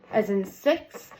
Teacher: Place of articulation behind the ridge behind my top teeth. Manner of articulation is fricatives or fricatives. And then it is an unvoiced sound.